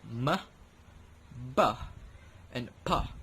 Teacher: You can observe that both my lips were connected with each other when I produced that sound. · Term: Bilabial